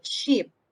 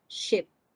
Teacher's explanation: the only difference is the length of the vowel